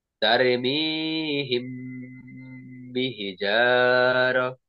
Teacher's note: ওই মিমে সাকিনকে গুন্নার সহিত একফা করিয়া পড়িতে হয়।